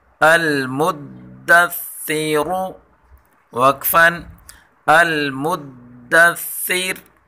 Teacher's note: ثا کو نرمی کے ساتھ پڑھیں گے اور را کو پر پڑھیں گے